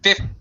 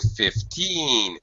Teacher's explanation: As opposed to 15, where teen, the second syllable is stressed, it's much higher, and this vowel sound is stretched out